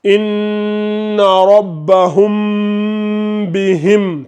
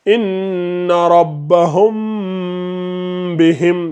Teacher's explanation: faites attention et ne faites pas de fusion, mais plutôt de la dissimulation